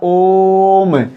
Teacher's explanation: ओम इस प्रकार से ओ दीर्घ स्वर है, लेकिन ओ को बोलते समय जिसे बोला गया ओम, इस प्रकार ओ को बोलने में हमें 2 मात्रा से ज्यादा समय लेना पड़ा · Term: प्लुत स्वर